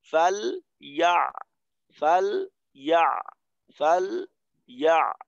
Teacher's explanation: লামের আওয়াজটা যেন একটু নরম হয় চালু থাকে, আর আইনের আওয়াজটাও যেন একটু নরম হয় চালু থাকে, যেন আওয়াজ দুইটা না আটকায়